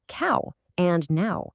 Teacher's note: for ow and cow, you can almost feel that falling tone.